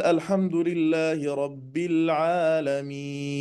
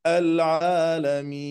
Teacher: هذا المد العارض يمد حركتين أو أربعة أو ستة